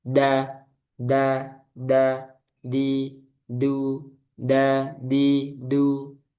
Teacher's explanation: Jadi huruf dal ini dia kebalikannya huruf ta dari sisi udara. Kalau dal dia jahr. Ah udaranya tertahan.